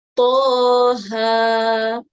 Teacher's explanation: kita panjangkan sebanyak 2 harakat untuk huruf To dan juga Ha kerana dua-dua huruf ni tidak ada ombak.